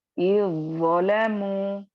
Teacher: जाल की आवाज कंप्लीटली खत्म हो जाएगी और आपको ज़ लाकर पढ़ना है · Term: इदगाम मुतजानिसैन सगीर